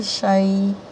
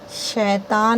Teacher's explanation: شین کو جب یا میں ملاتے ہیں نا، یائلین کو، تو اس کو نرم پڑھنا ہے